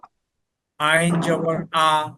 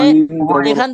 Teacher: গলার মাঝখান থেকে আওয়াজটা নিয়ে আসেন